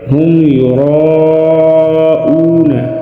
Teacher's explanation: را کے اوپر زبر ہے تو اس کو ہم موٹا ادا کریں گے۔ یراؤون، اور مد متصل کو 4 الف کے برابر کھینچ کر پڑھیں گے۔